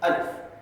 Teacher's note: اچھا، یہ جو الف کی جو آواز ہے، الف کی جو آواز ہے وہ آواز جو ہے منہ کے خالی حصے سے آتی ہے، الف، اور آسانی سے ہم پڑھ لیتے ہیں۔